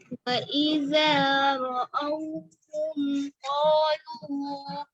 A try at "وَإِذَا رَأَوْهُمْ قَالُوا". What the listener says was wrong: وَإِذَا الف مدہ ہے نا، اس کو تھوڑا سا زیادہ لمبا ہو رہا ہے، دوبارہ پڑھیں.